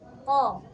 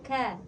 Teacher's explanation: Qaf juga sama nih, makhrajnya itu sama-sama pangkal lidah ya. Tapi kalau qaf itu paling belakang, kalau kaf sedikit di depannya gitu ya.